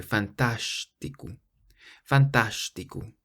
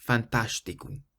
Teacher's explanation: And the O on the end is an U sound.